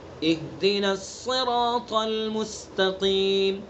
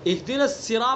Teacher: اگر صاد کو ہم نے پر نہیں کیا تو یہ بھی لہنے جلی غلطی بن جائے گی. صاد کی جو صفت ہے، اس کو پر کرنا، موٹا کرنا، منہ بھر کے پڑھنا. اگر ہم نے صاد کو منہ بھر کے نہیں پڑھا تو یہ سین بن جائے گا، اہدنا سرا بن جائے گا، سرا.